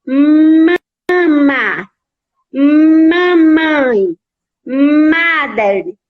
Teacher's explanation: esse M ele é pronunciado de forma mais prolongada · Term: sonzinho da letra M